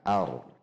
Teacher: bukan dengan membulatkan bibir jadi tidak a bulat bibirnya namun biasa saja bibirnya posisinya seperti biasa hanya pangkal lidah yang tegang